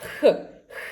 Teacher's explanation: First of all, your tip of the tongue should be placed behind the lower teeth and it should not touch them. While the back of the tongue raises towards the soft palate creating the narrow gap through which the air passes